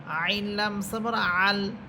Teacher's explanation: আইন কণ্ঠনালীর মধ্যখান থেকে